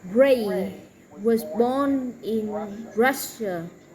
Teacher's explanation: Notice how my lips come forward on all my R's and W's.